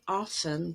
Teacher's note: in the word often t is silent in standard english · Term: silent t